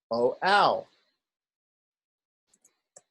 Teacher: when we take the pure vowels a and u and combine them, they become, first of all, o. Second of all, they become ow. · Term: diphthongs